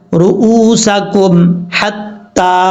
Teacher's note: میم ساکن کے بعد ہا ہے، تو یہاں پر آپ نے غنہ وغیرہ نہیں کرنا